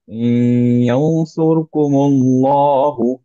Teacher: র সুকুনের আগে হচ্ছে দম্মা, সো এর জন্য হেভি।